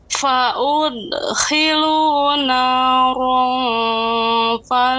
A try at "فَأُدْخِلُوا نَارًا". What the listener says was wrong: Qalqalah kurang. Qalqalahnya kurang, Ibu. Tidak fa ude. Fa ude.